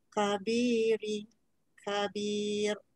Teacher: kaf jangan sampai kat tekak ya. Yang saya kata bunyi kat tekak tu qaf. Kaf tak payah. Kaf ni kat depan mulut je